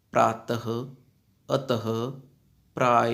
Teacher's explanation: विसर्ग का उच्चारण ह के रूप में किया जाता है